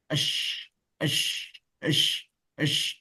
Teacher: khusus pada huruf shin ada pula sifat tafasyi, yaitu intisyarur rihi was sauti, menyebarnya suara dan menyebarnya nafas